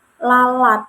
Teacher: Nah, ketika mengucapkan ini, itu terjadi proses lateral, yaitu ketika mengucapkan kata lalat, ini lidah itu menyempit kayak lidah itu menyempit sehingga udara itu dapat keluar dari sisi lidah gitu, dari rongga-rongga yang ada gitu, dari sisi yang ada gitu kayak lalat.